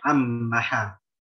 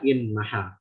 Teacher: In maha di sini bisa dibaca dua wal wajahan, bisa dibaca idgham, bisa dibaca izhar. Kalau izhar kan baca in maha.